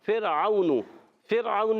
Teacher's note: فرعون میں را ساکن سے پہلے زیر را باریک ہو جائے گا